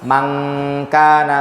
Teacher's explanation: Maka ketika nun sukun ketemu kaf, ujung lidahnya nggak ngapa-ngapain, tapi pangkal lidah langsung ke makhrajnya huruf kaf, ditambahin suara dengungan dari hidung. Bukan man kana, tapi mangkana baca. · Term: ikhfa